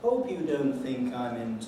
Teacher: the pitch is coming down all the way through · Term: falling head